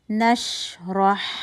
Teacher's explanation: آپ نے شین میں رخاوہ بھی دکھانا ہے کہ آواز چل رہی ہے, اور آپ نے ہوا نکلتی بھی محسوس ہو رہی ہے, وہ بھی آپ نے اس میں دکھانا ہے.